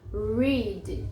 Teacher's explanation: Existem duas pronúncias diferentes dessa letra, mas em inglês, praticamente todas as palavras que tem o R, esse R, ele é retroflexo, ou seja, ele é pra dentro, ele enrola. Read. Você não vai falar read, não é o nosso R é bem diferente, tá?